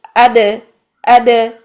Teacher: दाल की साकिन हालत में सांस भी बंद होगी